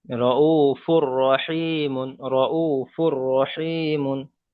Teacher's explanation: তানবিনকে র এর সাথে মিলিয়ে বিনা গণ্যায় পড়তে হবে। একে ইদগামে চারটি তাম করি বলা তার হয়।